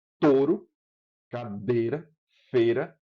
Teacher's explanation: Você pegou o ditongo e produziu como uma única vogal. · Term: monotongação